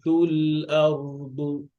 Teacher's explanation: লামটা হচ্ছে বাইনে তাওয়াস্তুর হরফ, আওয়াজটা আংশিক জারি থাকবে